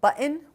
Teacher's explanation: This is phonologically button, but canonically pronounced like button with a glottal stop and then a nasal release.